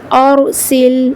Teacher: اگر را ساکن سے پہلے، یعنی جزم والی را سے پہلے جو حرف ہے اگر وہ زبر کی حرکت کے ساتھ ہوگا تو بھی را کو پر پڑھیں گے، جیسے ارسل، اور یہاں پر را کی آواز کو پر پڑھا کیونکہ را ساکن سے پہلے زبر موجود ہے